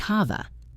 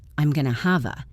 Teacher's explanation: The v sound in have connects to the a sound. So it sounds like hava. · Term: connected speech